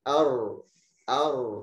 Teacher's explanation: bainiyah pada huruf ro, yaitu hembusan sebagian suara pada saat pengucapan ro karena sebagian besar ujung lidah menghalangi keluarnya hembusan huruf ini. Nah, ini kebalikannya dari huruf lam.